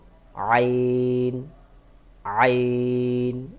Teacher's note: গলার মধ্যখান থেকে একটু চাপ দিয়ে উচ্চারণ করবেন